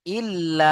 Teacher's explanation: এই যে লা কে 2 থেকে 3 আলিফ টান দিতে হবে, কারণ মাদের পরে হামজা ভিন্ন রূপে এসছে বা দ্বিতীয় শব্দে এসছে, তাই না? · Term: মাদ্দে মুনফাসিল